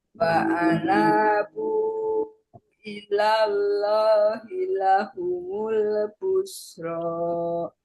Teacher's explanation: Karena hi-nya pendek Bu. 1 ketukan.